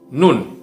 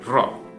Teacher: Nun agak ke depan, kalau ro itu agak masuk ke dalam.